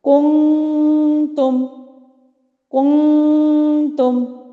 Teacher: کون کی دفعہ میں نے ہونٹوں کو گول کیا اور نون ساکن پہ فوراً ہونٹوں کو سیدھا کر لیا، یہ ہے ضمہ اور ضمتین کے ادائیگی کے وقت اخفاء۔